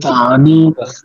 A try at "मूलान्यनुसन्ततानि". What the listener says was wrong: अच्छा, ये जो है ना, मूलान्यनुसंततानि एक साथ बोलना है। अनुसंततानि अलग अलग नहीं बुलाने। मूलान्यनुसंततानि, दीर्घ ह्रस्व। मूलान्यनु, लान्यनु, उसका उच्चारण होगा मूलान्यनुसंततानि।